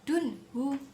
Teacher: bacaan idhar halqi sebab nun sukun bertemu dengan ha dan membacanya itu harus jelas